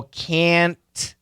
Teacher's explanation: make sure we stretch the short a can't and stop the T